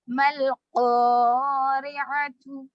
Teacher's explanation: را پہ زیر ہے تو یہاں پر را کو باریک بھی پڑھیں گے